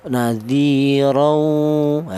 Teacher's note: idgam tadi yaitu tanwin ini langsung menyatu ke huruf wawu beserta ada dengungnya dua ketukan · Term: idgham bighunah